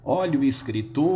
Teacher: Em escritor, a sílaba tônica é o TOR.